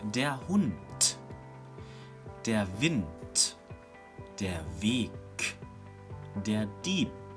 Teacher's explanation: All those words are written with a soft consonant, but they are pronounced hard